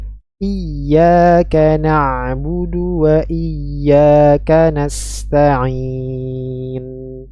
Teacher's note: alirkan suara Nun sukunnya dengan kadar bainiah pertengahan ya simak sekali lagi i n hati-ti Ain kasrah tidak ada